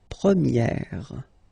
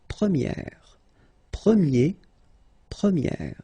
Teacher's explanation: So it's open, this eh sound.